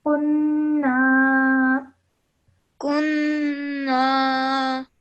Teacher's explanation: we must elongate the sound of na for 2 seconds